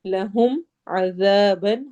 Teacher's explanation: ذال کو نرمی سے پڑھیں گے، زا کی آواز نہیں آئے گی